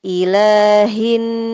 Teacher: Jadi itu panjangnya sepanjang empat harokat